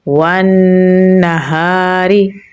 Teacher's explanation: वाव को नून के साथ मिलाएंगे क्योंकि नून के ऊपर तशदीद है। इस पे गुन्ना हो रहा है तो यहाँ पर हम इसकी आवाज़ को नाक में लेके जाएंगे और 1 सेकंड के लिए लंबा पढ़ेंगे